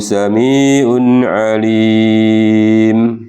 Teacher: Sami'un alim itu juga tanwin bertemu dengan ain, itu juga dibaca jelas, termasuk idghar halqi.